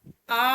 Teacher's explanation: आ का जब आप उच्चारण करते हैं तो मुंह जो है वो सबसे ज्यादा खुलता है। तो विवृत हो गया, आपका विवृत स्वर है आ।